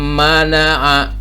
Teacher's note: Tapi karena ini idgham, maka dimasukkan si mim ini, huruf mim ini nih ke nun yang ini. Jadi nunnya tidak terdengar lagi. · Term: idgham bigunnah